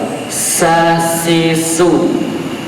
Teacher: Hamas itu nafas berjalan keluar, nafas keluar. Jadi anginnya itu keluar. Sedangkan jahar itu angin tidak keluar, anginnya tidak keluar.